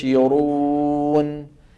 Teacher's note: النون الاخيره فيها ايش جريان ضئيل